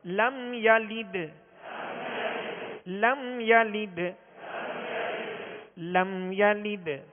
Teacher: لام کی جو زیر ہے اس کو معروف پڑھیں گے، آواز کو گرا کے پڑھیں گے